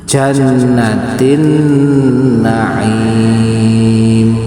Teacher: Tin suara tanwin bertemu dengan nun naim. Maka tanwinnya tidak terlihat. Yang terlihat adalah suara nun setelahnya.